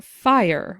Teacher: we slide from a to e to ER